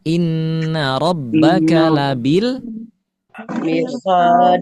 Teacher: Mirsad itu ada rnya dibaca tebal